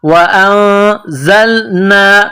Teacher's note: زا میں سیٹی کی آواز پیدا کرنی ہے